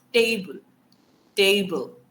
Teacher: the stress is usually on the first syllable